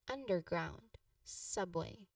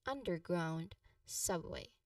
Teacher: For subway, its stress is on the sub, same as underground under first syllable.